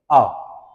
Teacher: विवृत, विवृत स्वर, विवृत का मतलब पूरा मुख द्वार खुलता है। आ कहोगे तो पूरा का पूरा मुंह आपका खुल जाएगा, पूरी गुफा खुल जाएगी।